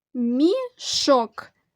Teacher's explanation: у цьому слові два Склади і наголошений другий склад